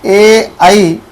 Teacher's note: कंठ आणि तालुचा उपयोग करून यांना उच्चारला जाते म्हणून यांना म्हणतो कंठ तालव्य